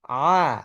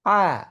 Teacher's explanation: আপনি আইন উচ্চারণ করেন মুখের সামনে হাত নিয়ে আ, দেখবেন কোনো বাতাস পাচ্ছেন না। কিন্তু যখন আপনি হা উচ্চারণ করছেন আ, আগে বাতাস যাচ্ছে তারপর আওয়াজ আসছে। কেন? তার কারণ হচ্ছে লিসানুল মিজমার পুরোপুরি লেগে নেই, আইনের মতো একটু ফাঁকা, হালকা ফাঁকা।